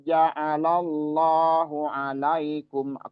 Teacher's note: tafkhim atau ditebalkan karena huruf sebelumnya berharakat fathah